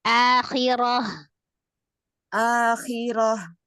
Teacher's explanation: jadi akhirah akhirah hanya a saja yang panjang